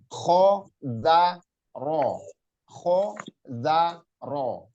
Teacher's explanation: kho itu ingat ngorok ya, kasar suaranya.